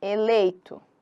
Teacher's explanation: aqui tá descendo. Eu tenho o meu e que é forte e o i que é fraco. · Eu tenho o meu E que é forte e o I que é fraco. Geralmente o I, quando ele não é hiato, a gente já vai falar de hiato, ele é semivogal, na maioria das vezes, beleza? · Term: decrescente